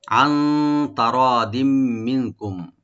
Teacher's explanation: আইনটাকে right দিব আর নুন সাকিন এখানে আমরা ইখফা করব, লাইট গুণনা।